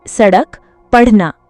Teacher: इनका उच्चारण करते समय जीभ पहले ऊपर उठती है, फिर तुरंत नीचे गिरती है, जिससे एक विशेष प्रकार की ध्वनि उत्पन्न होती है। ये वर्ण कभी भी किसी शब्द के शुरुआत में नहीं आते, बल्कि शब्द के मध्य या अंत में प्रयुक्त होते हैं, जैसे सड़क, पढ़ना। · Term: द्विगुण व्यंजन